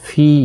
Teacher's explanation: فی یا مدہ ہے، اور اس کو بھی 1 الف کی مقدار کے برابر کھینچ کر پڑھیں گے۔